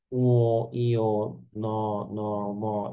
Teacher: নাকের এখানে একটা ভাইব্রেশন তৈরি হচ্ছে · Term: নাসিক্য ধ্বনি